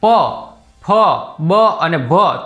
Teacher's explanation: તમે બોલશો પ, ફ, બ અને ભ તો 2 હોઠ બીડાશે, પછી જ બોલાશે. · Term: ઓષ્ઠ્ય